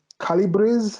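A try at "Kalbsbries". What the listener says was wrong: Calbries. It's just two syllables. Calbries.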